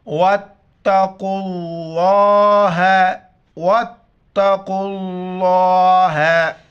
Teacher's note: لفظ اللہ سے پہلے جو حرف ہے اس کے اوپر زبر او یا پیش ہو تو لفظ اللہ کو موٹا کر کے پڑھیں گے. یہاں پر لفظ اللہ سے پہلے قوف ہے، قوف کے اوپر پیش ہے تو لفظ اللہ کو موٹا کر کے پڑھیں گے. قوف موٹی الفاظ میں اس کو موٹا کر کے پڑھیں گے. · قوف موٹی الفاظ میں اس کو موٹا کر کے پڑھیں گے. واو الف، الف اور لفظ اللہ کا پہلا لام وہ پڑھا نہیں جاتا ہے. قوف کو لفظ اللہ کے دوسرے لام کے ساتھ ملائیں گے اور لام کے اوپر کڑا زبر ہے، ایک الف کی مقدار کھینچنا ہے.